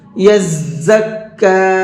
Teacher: یزکا، زا کا ساؤنڈ اور دال کا ساؤنڈ الگ الگ ہوتا ہے، تو یہاں پر زا ہے اور زا کے ساؤنڈ میں ہلکی سی سیٹی ہوتی ہے